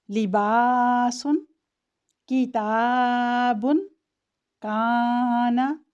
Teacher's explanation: ان تمام حروف میں الف باریک پڑھا جاتا ہے، یعنی ترقیق سے پڑھا جائے گا۔